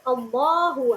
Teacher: lam jalalah pada kalimat Allah ini dibaca tafkhim atau tebal